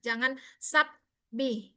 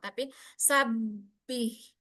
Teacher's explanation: Kemudian wasabbih. Wasabbih ba di situ syiddah sifatnya. Maka tampakkan syiddahnya